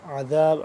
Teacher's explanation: عین کو حلق درمیانی حصے سے کھچاؤ پیدا کر کے نکلے گا